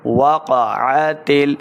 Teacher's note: عین کا مخرج حلق کے درمیان والے حصے سے